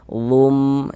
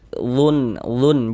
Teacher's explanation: Jadi bunyi nun sukun atau bunyi tanwinnya dimasukkan ke dalam huruf idgham bi gunnah. Kemudian disertai dengan gunnah. Jadi didengungkan. Jadi ini kita baca lum, jangan dibaca lun, jangan, tapi dibaca lum.